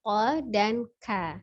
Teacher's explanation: Lafalnya berharokat fathah harus dibuka ya. Kita lihat makhrajnya huruf qaf dan kaf itu dari pangkal lidah dan langit-langit ya